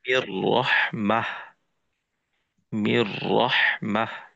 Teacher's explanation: গুন্না ছাড়া মিলেই পড়তে হবে। নুন সাকিন ও তানবিনকে গুণনা ছাড়া মিলিয়ে পড়তে হবে।